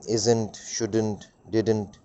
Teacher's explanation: So the word not, not, especially o, is getting deleted in all the contractions. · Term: deletion